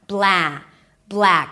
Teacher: You start with a B sound and then the L, bl, make the L a little heavier, then open it to the as in cat, black. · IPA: blæk